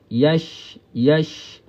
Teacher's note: Bezanya pada sifat ajelah. Ya dengan syin ni makhraj yang sama. Tengah lidah. Ya. Bukaan mulut kita pun sama. · Bukaan mulut kita pun sama. Ah cuma sifat syin tu kena masukkan tafasyi tu. berhamburan